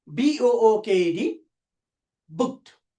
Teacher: After the voiceless sound, ed or d is pronounced as ta.